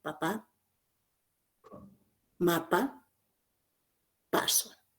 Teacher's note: Porque el velo del paladar está adherido a la pared faríngea. Según punto de articulación, es un sonido bilabial. Se articula con ambos labios, intervención de ambos labios, labio inferior, labio superior. · Y según las cuerdas vocales, es un sonido sordo. Porque en el momento de la emisión de este sonido, las cuerdas vocales están estáticas, no están vibrando.